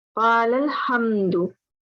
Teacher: We are not pronouncing the alifs in between.